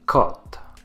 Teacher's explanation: c'est le son du O ouvert. La bouche est plus ouverte quand on le prononce.